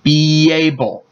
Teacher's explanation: vowel so a y is added and it'll sound like beable you can hear a little bit of a why between the words instead of a space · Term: linking, Linking